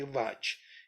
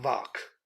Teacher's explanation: It will become vak. Ch falls into k. · Cha varga never sustains itself. It falls into ka varga or ta varga, either into k or t.